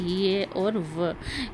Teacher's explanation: ऐसे वर्ण जिनको बोलते समय प्राण वायु को किसी प्रकार का संघर्ष नहीं करना पड़ता है। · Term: संघर्षहीन वर्ण